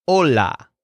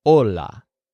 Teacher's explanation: but the H is silent so it's just hola